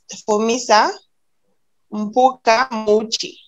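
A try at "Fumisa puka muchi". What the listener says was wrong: Puka, not Mpuka.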